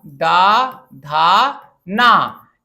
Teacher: दंत से उच्चारित होने वाले हैं। स्पर्श है, दंत है, अघोष है।